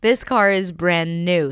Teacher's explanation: This car is brand new, stress on 'new'.